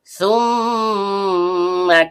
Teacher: Mim huruf bibir. Karena mimnya bertasydid maka terjadi hukum bacaan ghunna asli. Dibaca dengung dan setiap dengung keluar dari hidung.